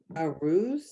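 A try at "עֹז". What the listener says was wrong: O's. O's. So the ayin is silent. That is the O vowel, the vav with the dot on top makes the O. So it's O's.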